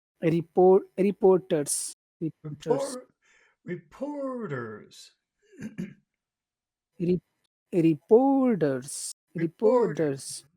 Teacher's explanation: go down a little bit when you say the end of the phrase